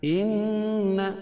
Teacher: إن نون مشدد اس میں غنہ ہوگا